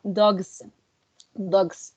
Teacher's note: Here we have the example dogs, and we can see that the g sound in dogs is voiced, which changes the sound into a voiced s, making the pronunciation dogs, dogs, right?